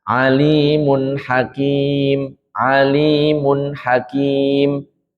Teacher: ini semuanya dibaca jelas nunnya muncul keluar dari makhrujnya tempat keluarnya